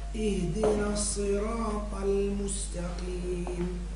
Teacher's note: بعد الطاء بعدها اللام، الطاء مفخمة واللام مرققة